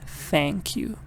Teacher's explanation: you should put your tongue between your teeth and say that TH